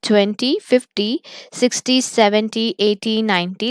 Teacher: the words that denote the multiples of 10 which means that can be divided by 10 that stress falls on the first syllable